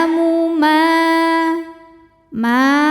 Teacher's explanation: ma hukum tajwidnya adalah mad thi'i mad thiinya mad thii ziri sebab ada Alif yang sebelumnya berbaris fathah maka cara bacanya mim dipanjangkan dua harakat